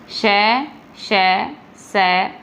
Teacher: उसके बाद में देखो, उसके बाद में है आपके संघर्षी व्यंजन, जिन व्यंजन वर्णों का उच्चारण करते समय दो उच्चारण अवयव इतने निकट आ जाते हैं कि वायु निकासी का मार्ग इतना संकरा हो जाता है कि वायु को बाहर निकलते समय संघर्ष करना पड़ता है, अतः ये संघर्षी व्यंजन कहलाते हैं।